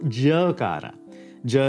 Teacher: our next consonant is the voiced unaspirated palatal